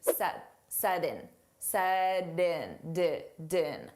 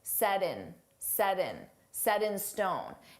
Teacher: So we can pronounce that T as a soft D